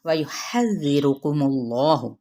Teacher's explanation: ہا وسط حلق سے ادا کرتے ہوئے زال کے ساتھ نرمی سے ملائیں گے